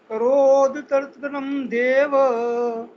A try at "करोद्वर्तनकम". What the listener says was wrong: करोद बोल के वर्तनकम हुआ को बड़ा कर लो, द को छोटा कर लो। करोद्वर्तनकम देव